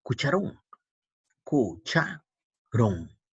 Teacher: Ron es la mayor fuerza de voz.